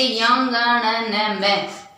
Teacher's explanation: नासिक के व्यंजन में क्या होता है कि अपने कै से लेकर जो पै वर्ग है उसका जो अंतिम वर्ण है, जैसे यं, ङ, न, म, ये जो ध्वनि है वो नासिक के व्यंजन के अंतर्गत आती है, क्योंकि जब हम इनका उच्चारण करते हैं तो हमारे नाक के अंदर से भी श्वास आती है